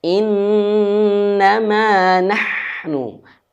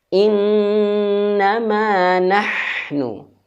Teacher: Ha di sini dia keluar dari halq, cuman halkinya bagian tengah, bagian wasal halqi.